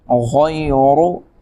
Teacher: را کے اوپر پیش ہے لہذا را کو موٹا کیا جائے گا